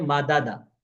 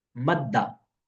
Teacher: वो करते ये हैं कि ये जो पहले दाल की हरकत है इसको हजफ कर देते हैं। अगर पिछला हरफ साकिन हो तो उसको दे देते हैं।